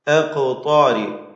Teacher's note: ഖാഫിന്റെ സുക്കൂൻ ഖൽഖലഹ നൽകി ശബ്ദം ചലിപ്പിച്ച് വ്യക്തമാക്കണം. ത്വാഉം അതിൻ്റെ ദീർഘാക്ഷരമായ അലിഫും തഫ്ഹീം ചെയ്യണം.